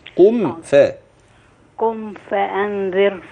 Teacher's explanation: الميم تبقى واضحة ما فيش فيها غنة